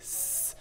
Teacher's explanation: So for example, when I produce an S sound, like S, my mouth is making a specific formation. So I'm putting my front teeth together and I'm pushing my tongue up against my bottom set of teeth to produce the S sound.